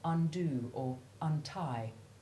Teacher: there is a slight secondary stress on those first syllables that imply the opposite of the root word